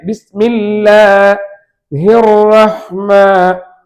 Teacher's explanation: ராவுக்கு ஃபத்ஹ் வந்தால் தஃபீமாக சொல்ல வேண்டும். அதாவது வாய் நிரம்ப சொல்லணும். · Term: ரா தஃபீம்